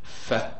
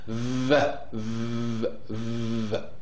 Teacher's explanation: whenever you produce the sound F make sure that there is no vibration while when you produce the sound V there is a vibration